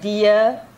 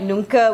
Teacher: So you have the regular A at the end of the words, and basically if you have a regular A at the end of a word, it is actually a schwa